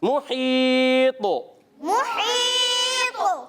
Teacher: ہا کی ادائیگی حلق کے درمیان والے حصے سے